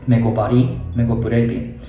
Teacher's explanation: But for this word, actually, you have to say megoburebi. The vowel a after b actually drops down